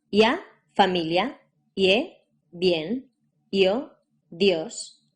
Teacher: and E when you combine a strong in a week Val the strong vowel takes over the syllable it's longer and the weak one becomes short fast and almost like a consonant